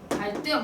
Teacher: 리을 뒤에 디귿을 된소리로 발음한다는 얘기입니다